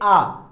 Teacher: आ बोलने पे ज्यादा वायु कहां पे इंपैक्ट कर रहा है, ज्यादा प्रभाव कहां डाल रहा है, गले पे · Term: कंठ